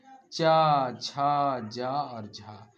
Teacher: रगड़ खाकर बाहर स्पर्श संघर्षी व्यंजन च छ ज और झा इन व्यंजनों के उच्चारण में वायु पहले किसी मुख अवयव से स्पर्श करती है फिर रगड़ खाते हुए बाहर निकलती है